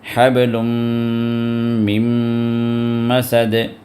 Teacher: اسی طرح نون ساکن کے بعد پھر میم آ گیا، میم مسد، یہاں پر میم پہ شد آ گیا، تو یہ نون بھی میم کے اندر شامل ہو جائے گا اور میم کا ساؤنڈ وہاں پر دے گا، تو 2 حرکت تک آپ کو یہ میم دبا کے رکھنا ہے · تنوین کے اندر جو نون ہوتا ہے وہ میم میں داخل ہو جاتا، ادغام ہو گیا وہاں پر۔ تو یہاں پر بھی میم کو دبا کر 2 حرکت دبا کر رکھیں گے۔